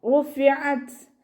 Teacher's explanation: ത സുക്കൂനിൽ നിർത്തുമ്പോൾ കുറച്ച് എയർ പുറത്തോട്ട് പോണ സൗണ്ടിൽ വേണം നിർത്തി കൊടുക്കുക